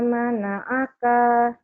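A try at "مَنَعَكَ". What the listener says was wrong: Kanya pendek.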